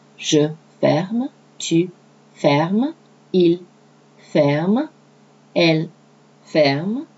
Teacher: the R has to be soft from the back of your throat